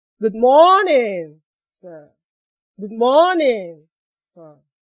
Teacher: You use falling tone to greet people.